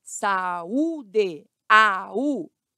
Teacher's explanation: hiato encontro de duas vogais em sílabas diferentes